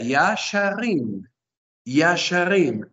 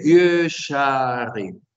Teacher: Y tiene una vocal que debemos reducir. Entonces, Kames Rahab se vuelve Shubal.